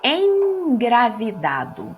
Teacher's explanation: o m é um som que chamamos de bilabial ou seja os lábios encosta um no outro nos dois lados bilabial diferente do n que é lindo dental a língua fica